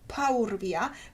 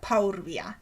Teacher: You see, the U which precedes the R is epenthetic. It is anticipated from the word which follows the R. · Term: U epenthesis